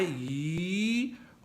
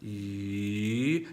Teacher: It can start medium and rise to high, E, or it can start low and rise higher, E. It really depends on your natural voice. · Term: Second tone